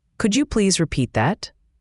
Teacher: The D and Y sounds often merge. · the T at the end of repeat can sometimes be almost silent, especially when you flow into the next word. It's not repeat T that, but more like repeat that.